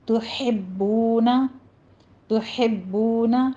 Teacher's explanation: آگے تا کے پر ضمہ ہے، ہونٹ گول کیجئے